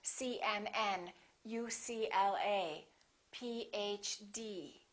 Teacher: The rule is we stress the last letter of an abbreviation.